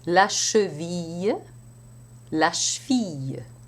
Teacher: the V sounds a lot like an F because it is devoiced due to the sh, which is unvoiced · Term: progressive devoicing